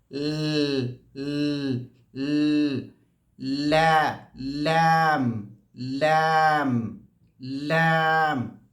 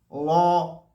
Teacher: बल्कि लैम का मखरज जो है, हमारी जो ज़बान है, ये यहाँ ल ल, जो अपर गम्स का एरिया है, तालू कहते हैं, वहाँ पर लगना चाहिए। और सिर्फ ज़बान का नोकदार हिस्सा नहीं, बल्कि एज एज of the tongue, front एज, सामने वाला जो हिस्सा है, ये पूरा लगना चाहिए।